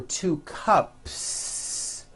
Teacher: It ends with an unvoiced p- cup. Well, then if you add an s to the word cup to make it plural, the s you add also remains unvoiced.